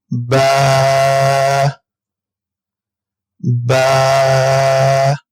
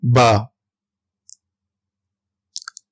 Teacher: با دونوں ہونٹوں کے تر حصے سے ادا ہوگا با